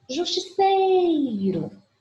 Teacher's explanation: Então, em favor, o vor é a última sílaba e é a sílaba mais forte, que eu pronuncio com mais intensidade. Justiceiro, o sei com maior intensidade. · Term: sílaba tônica